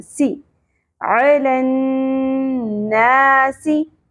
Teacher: سین کی زیر کو زیادہ نہیں کھینچنا